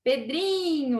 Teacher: Pedrinho, a sílaba tônica é o dri